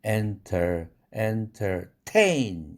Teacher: enter 할 때 ter이라는 음절은 강세가 없어서 약하게 파열됩니다. 약한 기음이 쏟아져 납니다.